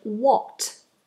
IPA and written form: wɒt (What)